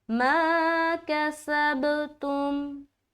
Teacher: अब यहाँ पर कोई पढ़ दे तुम, क्या पढ़े, तुम, तो वो यहाँ पर गलत होगा, क्योंकि मीम कलकला वाला हर्फ नहीं है, तो आप मिलाकर जुदा क्यों कर रहे हैं।